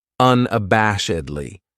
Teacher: This adverb has five syllables and the stress is on that third syllable that bash